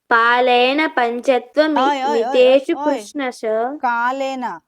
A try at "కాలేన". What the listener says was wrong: పాలేన అంటున్నావు